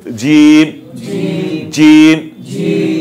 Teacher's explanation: জিব্বার মাঝখানে উপরে তালুর সঙ্গে লাগাইয়া, একটু জোরে হবে, একটু মোটা হবে। জিম জিম, জিব্বার মাঝখানে উপরে তালুর সঙ্গে লাগাইয়া।